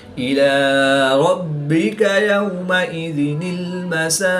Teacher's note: با مشدد ہے اور یہ حروف قلقلہ میں سے ہے تو یہاں پر قلقلہ کبریٰ کر کے پڑھیں گے. وقف کی حالت میں قاف کی پیش کو ساکن کریں گے تو یہاں پر وقف کی حالت میں قلقلہ صغریٰ کر کے پڑھیں گے.